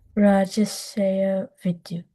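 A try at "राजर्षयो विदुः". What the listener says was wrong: Okay, good. Better.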